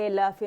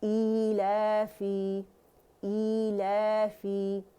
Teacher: فا کسرہ فی ہے، فے نہیں بولیں گے. ٹھیک ہے، ایلافے نہیں بولیں گے.